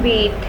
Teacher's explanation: It is a cardinal vowel produced from cardinal position and produced from high front position of tongue in the mouth.